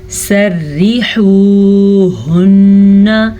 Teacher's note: را کو باریک پڑھیں گے، را کے نیچے زیر ہے